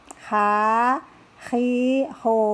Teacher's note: huruf H keluar dari tenggorokan bagian tengah